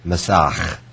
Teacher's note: you'll hear that raspy sound that I'm emphasizing a little because at the end, in Hebrew there are guttural sounds like Bach